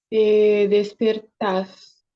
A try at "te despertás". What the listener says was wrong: Te despertás. Recuerden en esos verbos del vos que al final, pa, lleva la pronunciación más fuerte. Te despertás.